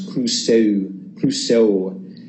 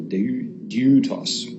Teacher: two vowels that sort of smush together uh where the first one is pronounced almost like a y sound